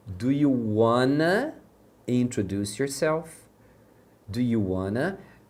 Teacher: O want to, quando eles falam, eles juntam. Então, normalmente, eles vão falar o wanna quando a frase tiver want to, né?